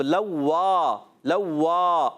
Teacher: اب لوا، لوا علی مدہ ہے، لام کو نہیں کھینچنے، مگر واو الف زبر وا، اس کو کھینچنا ہے۔ تو لام پر حرکت یہ نہیں کھینچیں گے، واو الف زبر وا، یہ علی مدہ ہے، ایک الف کھینچنا ہے، واو مشدد ہے، ذرا رک کر ادا کریں گے۔